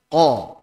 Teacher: Qaf itu adalah di pangkal lidah bagian atas.